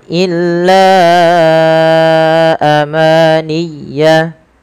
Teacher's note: Panjangkan la sepanjang 4 atau 5 harakat karena pada lafal bacaan la di sini ada mad jaiz munfasil, yaitu mad yang wajib kita panjangkan 4 atau 5 harakat dalam riwayat Imam Syatibi.